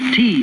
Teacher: Your lips were open, your teeth apart. You pressed your tongue against the roof of your mouth and suddenly snapped it down, not forward, expelling a puff of air. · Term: consonant T